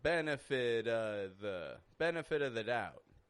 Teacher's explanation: the V sound is not being used. I'm using a schwa.